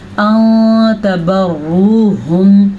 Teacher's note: नून साकिन के बाद ता आया हुआ है तो नून साकिन को हमने छुपा के पढ़ना है।